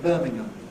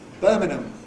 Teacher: They have a more careful version with a velar and a more casual version with an alveolar.